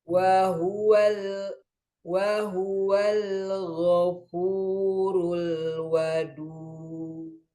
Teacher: Al-ghafu, hati-hati, ghain tebal, fu tipis, ru tebal lagi. Jadi tebal, tipis, tebal.